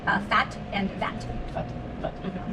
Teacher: So we make them using the lips, upper teeth and lower lip. The only difference is V has a vibration and F is just air.